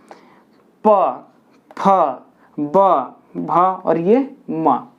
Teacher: मेरा ओठ जो है स्पर्श कर रहा है एक दूसरे ओठ को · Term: ओष्ठ